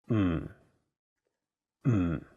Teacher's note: notice that there is no vowel in the syllable so you have to really stress the M sound · the first character is in a very low tone fourth tone